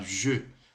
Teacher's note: o J no francês fica assim, ó, je, com um leve biquinho